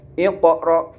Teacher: qalqalah sughra yaitu qalqalah yang terjadi apabila huruf qalqalah mati asli, sedangkan bacanya harus terang dan memantul